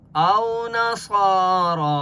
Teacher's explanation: اسی طرح را کے اوپر کھڑا زبر ہے، ایک الف کی مقدار کھینچ کر پڑھیں گے، اس یا کو نہیں پڑھیں گے۔ اور صاد مستعلیہ میں سے ہے، اس لیے صاد کو موٹا پڑھیں گے اور را کو پر پڑھیں گے۔